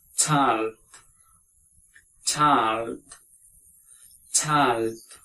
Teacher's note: ) sound and (ai) it is diphthong it is diphthong diphthong it combines two vowels and make one syllable